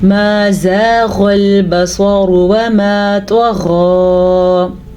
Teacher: غین کو ہم نے پر پڑھا ہے کیونکہ غین حروف مستعلیہ میں سے ہے. صاد کو ہم نے پر پڑھا ہے کیونکہ صاد بھی حروف مستعلیہ میں سے ہے